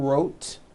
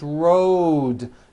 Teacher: It's not wrote unvoiced. It's rode. The whole word is voiced. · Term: voiced D ending